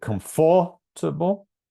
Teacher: we know there's 4 syllables, and we know the first syllable is stressed. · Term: stressed syllable